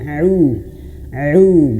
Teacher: Ain itu makhrajnya di tengah tenggorokan.